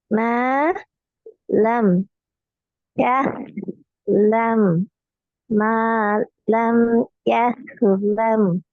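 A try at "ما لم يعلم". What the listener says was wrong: ஆஹா, யஹ்லம் என்று தான் வருது. யஹ்ன்னு சொன்னா ஹாவா வந்து இதப்ப ஹா தான் யஹ்ன்னு வரணும்.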